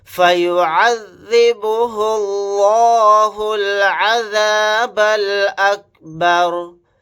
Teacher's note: یہاں پر لفظ اللہ کے لام کو موٹا یعنی پر پڑھیں گے کیونکہ لفظ اللہ کے لام سے پہلے پیش ہے۔ اگر لفظ اللہ کے لام سے پہلے زبر یا پیش ہو تو لفظ اللہ کے لام کو موٹا یعنی پر پڑھتے ہیں، اور لفظ اللہ کے لام سے پہلے زیر آ جائے تو اس لفظ اللہ کے لام کو باریک پڑھتے ہیں۔